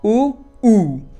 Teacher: दूसरे ऊ में होंठों को थोड़ा और आगे लिया गया है